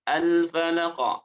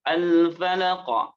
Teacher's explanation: Dinaikkan pangkal lidahnya sehingga bacaannya, suaranya, pantulannya terangkat. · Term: huruf qaf